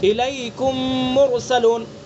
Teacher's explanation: الیکم میں میم ساکن ہے اور مرسلون میں دوسرا میم ہے، تو میم کا دوسرے میم میں ادغام کیا گیا